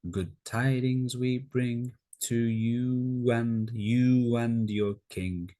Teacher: the w sound intrudes between oo and a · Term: intrusion